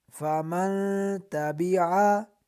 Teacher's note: فمن تبعا کے اندر نون ساکن میں اخفا کریں گے یعنی غنہ کر کے پڑھیں گے